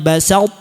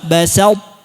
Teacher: Tapi kalau tha bertemu dengan ta, huruf tha-nya itu tetap ada, tapi sebagian sifat, tidak semuanya. Qalqalahnya hilang, yang nampak apa? Tebal. Sifat tebalnya yang ada.